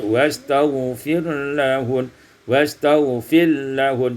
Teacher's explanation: wastaghfir lahun, idgham ra fil lam, diidghamkan ra pada lam menjadi wastaghfir lahun